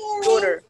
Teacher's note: Kalau orang Amerika, tehnya ganti jadi D.